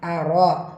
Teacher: ரா ஃபத்ஹா பெற்று வந்திருக்கு, வல்லினமாக ஓதணும்